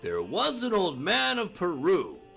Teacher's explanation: it means there's two unstressed syllables followed by the third stressed syllable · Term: anapestic